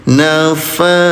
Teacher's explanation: Dalnya disukunkan, berhenti di sini ya. Qalqalah itu pantulkan, jadi tambahkan de ay bunda di belakangnya.